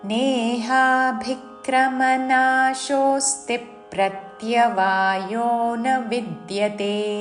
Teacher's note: రెండవ చరణములోని మొదటి అక్షరము సంయుక్త అక్షరము దానిలోని ప ద్విత్వము చేసి రెండు చరణములు కలిసి పాడాలి